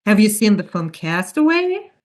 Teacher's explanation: It's a yes/no question, and in American English, the intonation rule is then when we have a question that can be answered with yes or no, like the question, have you seen the film Castaway? We go up at the end, so the pitch rises at the end of the question.